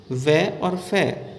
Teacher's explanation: दंत ओष्ठ से उच्चारण होने के कारण दंतोष्ठ कहलाते हैं